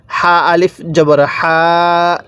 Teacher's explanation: এই হা টা উচ্চারণের সময় মুখ দিয়ে হালকা বাতাস বের করব